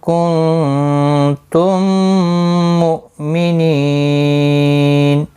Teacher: میم ساکن کے بعد دوسرا میم مشدد آیا ہے، یہاں پر ادغام شفوی ہوگا، گنہ کے ساتھ پڑھیں گے. حمزہ ساکن کو جھٹکے کے ساتھ پڑھیں گے.